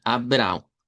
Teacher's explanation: El nombre de Abraham que nosotros lo pronunciamos español en portugués sonaría a Abra. Abr con a nasalizada y una w nasalizada